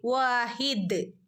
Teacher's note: പോകണമെങ്കിൽ ഓതി പോവുകയും ചെയ്യാം ഓക്കേ നിർത്തുമ്പോൾ ഇവിടെ ദാലിന് സുക്കൂൻ വരും വാഹിദ് ദാലിന് സുക്കൂൻ വരുമ്പോൾ ദാൽ കൽക്കലന്റെ ലെറ്റർ ആണ് അപ് അതുകൊണ്ട് ഫുൾ സുക്കൂൻ കൊടുക്കണം നിർത്തുയാണെങ്കിൽ വാഹിദ് ഓക്കേ കൂട്ടിചേർത്ത് ഓതുകയാണെങ്കിൽ വഹിദും